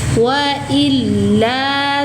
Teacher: Tekan dan naikkan suara, ya. Lamnya bertasydid. Wailla satu ayunan panjang.